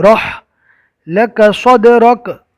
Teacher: صد کو پور پڑھنا ہے، دال میں کلکلا ہوگا